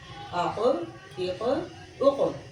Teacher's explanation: اس میں کوئی شد کی علامت نہیں پائی گئی لیکن ایک اچھٹتی ہوئی سی آواز ضرور معلوم ہوئی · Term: قلقلہ